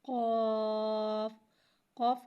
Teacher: قوف کی آواز حلق سے ادا ہوتی ہے۔